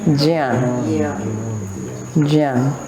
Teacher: It is a conjunct consonant. These are two consonants coming together, ja and nya, and they belong to the palate. They are palatal sounds.